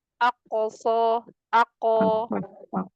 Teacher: Tapi qofnya qalqalahnya mau dipantul.